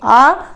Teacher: तो तब आपको महसूस होगा जब आप इसको बोलेंगे आ, तो आपके जीभ का पीछे का हिस्सा उठ रहा है, ठीक है। तो ये हमारा क्या हो जाएगा, पश्च स्वर हो जाएगा।